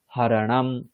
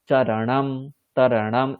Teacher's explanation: তাই দন্তীয় নকারটা কি হয়ে যাচ্ছে মূর্ধন্য নকার হয়ে গিয়ে হরণাম